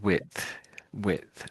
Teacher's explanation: really all the sounds come together. There's no sort of gap, is there?